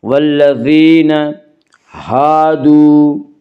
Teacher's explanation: الف مدہ کو 1 الف کے برابر کھینچ کر پڑھیں گے